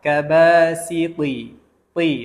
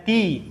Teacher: Huruf ta pula kita tebalkan. Itulah yang sepatutnya kita tebalkan. Dan juga jelaskan sifat itbaq bagi huruf ta.